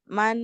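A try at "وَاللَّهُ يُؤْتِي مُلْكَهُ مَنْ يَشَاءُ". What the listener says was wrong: না গুণা করবেন না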